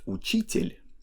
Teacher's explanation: singular word uchitel has soft l at the end because of soft sign